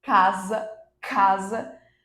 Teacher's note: o s vai ter o som de z